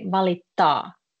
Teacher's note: Valita, just cut it short, the last R, and when it's valittaa, you say it a bit longer and try to pronounce T. Yeah, valittaa, like you're trying to say the T as a double and R as a double.